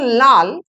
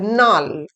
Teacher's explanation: ল এবং ন ধ্বনির বিপর্যয়। দন্তন অর্থাৎ ল ধ্বনি কখনো কখনো দন্তন্য ধ্বনিতে পরিণত হচ্ছে।